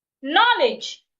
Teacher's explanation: Knowledge. Knowledge. I'm stressing the first syllable.